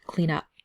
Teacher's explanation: N and the U connect together. So it almost sounds like it's just one word, clean up. Okay, and we also don't say fill out.